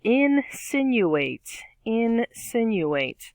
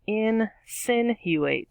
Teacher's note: stress on the second syllable there out of the four